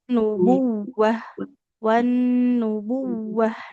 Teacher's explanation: Nunnya tasdid ditahan dulu. Huruf wawunya dialirkan suaranya. Kan huruf bertasdid itu harus adanya nabar atau penekanan.